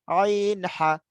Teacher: 2 নম্বর মাখরাজ হলকের মধ্যভাগ হইতে